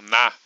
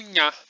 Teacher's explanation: Então a gente tinha no latim esse fonema que era o fonema N, né, que é o na, que a gente também tem no português. Porém, em algumas palavras, dependendo, claro, do contexto, esse na passou a ser pronunciado como nha. Então, a princípio, esse nha aparecia em contextos muito específicos da palavra, como quando ele era sucedido pelas vogais E pela vogal I também, né?